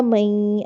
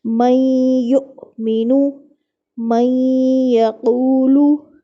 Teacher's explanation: اب دیکھیں نون کی ہم آواز ہی نہیں نکال رہے، کیوں؟ کیونکہ نون اب یہاں پہ یا کے ساتھ مل چکا ہے۔ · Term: ادغام